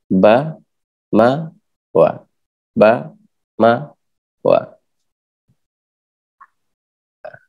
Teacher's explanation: Kemudian yang nombor 2, bibir bawah dan atas posisi rapat.